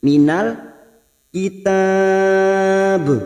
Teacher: Mad arid li sukun kita panjangkan, kita samakan dengan video sebelumnya 4 harokat. · lam ta'rif yang ciri-cirinya bersukun ini adalah alif lam qamariyah atau idhar qamariyah